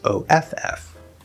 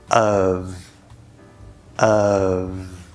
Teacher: We have a schwa sound, uh uh, and we have a v sound